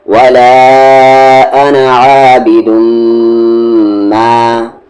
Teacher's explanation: ولا انا، عین کے ساتھ الف آ، با پر زیر بی، دو کو میں دم، عابدم. میم پہ تشدید ہے، غنہ کریں گے یعنی آواز کو ناک میں رکھیں گے، پھر میم کے ساتھ الف ما.